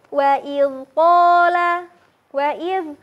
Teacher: huruf zal dilafadzkan dengan cara mengalirkan suara, bukan dengan menahannya atau memantulkannya ya, tapi dialirkan. Nah, untuk lidahnya, silakan sahabat disimpan lidahnya ke bagian ujung gigi.